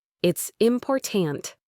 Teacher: The stress is in the middle.